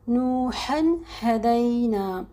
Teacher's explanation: ہا آپ کو حلق کے درمیانی حصے سے نکالنا ہے · ہا جو ہے گول والی ہا, یہاں پہ جس کو 2 چشمی ہا بھی آپ عام الفاظوں میں کہتے ہیں, اس ہا کو آپ کو سینے سے نکالنا ہے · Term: حلق کا درمیانی حصہ